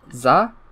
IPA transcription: z